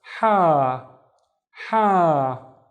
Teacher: the alif making the ha twice as long